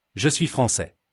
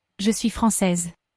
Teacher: The S at the end of the masculine français is silent, but the S in the feminine française is heard because it has an E after it.